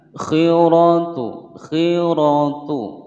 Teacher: Khiratu, khiratu pendek semua. Kemudian ra berharokat fathah, bacaan ra tafkhim, dibaca tebal